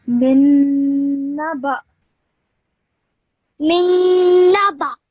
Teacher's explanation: when you're joining the ba to the hamza with the sukoon, you do so with producing a slight jerk sound when you say the hamza